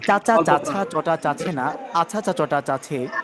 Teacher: ছ মহাপ্রাণ তো মহাপ্রাণের উচ্চারণটি আমরা করব সাথে সাথে